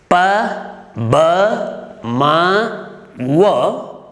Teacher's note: pa, ba, ma, wa are bilabial sounds. We use both our lips for pronouncing these four sounds.